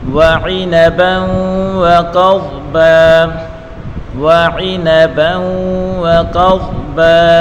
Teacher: با کے اوپر دو زبر کی تنوین ہے, اور با کو واو کے ساتھ ملا کر پڑھیں گے · ادغام کا قانون ہے, واو کے اوپر پڑھی حرکت ہے, قاف کے اوپر بھی پڑھی حرکت ہے, بغیر کھینچے پڑھیں گے. قاف کو پر پڑھیں گے, اور قاف کو ضاد کے ساتھ ملا کر پڑھیں گے, ضاد کو بھی پر پڑھیں گے. وعنبا وقضبا, با کے بعد دو زبر کی تنوین ہے, اگر وقف کریں گے تو ایک زبر اور ایک الف پڑھیں گے.